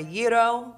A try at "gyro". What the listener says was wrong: gyro. And gyro then. Get the G out of there.